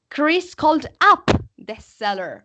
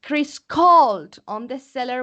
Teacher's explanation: Pues yo cuando lo leo, cuando es un phrasal verb, yo digo, Chris called up the seller, ¿ok? Doy más entonación en el adverbio.